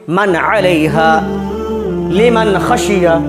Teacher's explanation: नून साकिन की आवाज़ को ज़ाहिर करके बिला गुन्ना जल्द पढ़ेंगे। इसी यहाँ भी मन अलैहा लिमन खशिया, यहाँ भी नून साकिन के बाद हुरूफ हल्की के 6 हरफों में से खौ है, इसलिए यहाँ भी नून साकिन की आवाज़ को ज़ाहिर करके जल्द पढ़ेंगे।